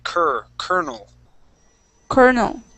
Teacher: this L is going to be pronounced like an R.